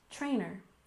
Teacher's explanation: stress the first syllable in trainer